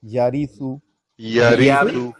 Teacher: اس را کو بھی مرقق یعنی باریک پڑھیں گے